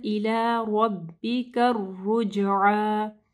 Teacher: इला नहीं पढ़ना, इला रब्बिका रुजआ, रॉ को हैवी पढ़ना है, जीम के ऊपर कलकला होगा, आइन को वाज़िह पढ़ना है और खड़ी ज़बर को पढ़ना है।